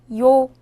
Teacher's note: 요는 먼저 이를 소리내다가 바로 이어서 오를 소리내며 발음합니다.